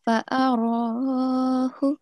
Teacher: the ra, remember to prolong it for 2 seconds